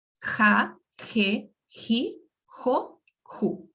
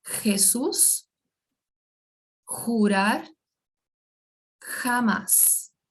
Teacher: aquele R raspado no fundo da garganta